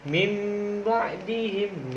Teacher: Cara membacanya pun ketika nun mati itu bertemu dengan huruf ba, itu nun matinya hilang, diganti dengan mim. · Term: iklab